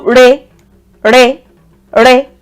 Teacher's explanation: Re is a bit higher than do. It's a bit higher. One step higher. It's not quite me. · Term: middle tone